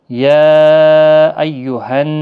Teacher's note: یا یہاں پر مد منفصل ہے، 3 الف کی مقدار کے برابر کھینچ کر پڑھیں گے۔ حروف مدہ یا کھڑی حرکات کے بعد جب الف دوسرے کلمے کے شروع میں آتا ہے تو چھوٹی مد لگتی ہے، جس کو 3 الف کی مقدار کے برابر کھینچ کر پڑھا جاتا ہے۔